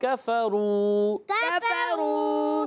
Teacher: قاف موٹا نہیں کرنا، کاف باریک